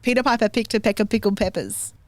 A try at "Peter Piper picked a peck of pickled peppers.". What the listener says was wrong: That's a little bit slower, but really still not slow enough.